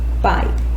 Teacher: eu tenho o som mais forte, que é o som da vogal, e depois o som mais fraco, que é o som da semivogal. É um som que vai decrescendo. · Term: ditongo decrescente